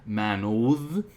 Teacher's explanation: it would be likely pronounced as Manod, a voiced th to simplify that sound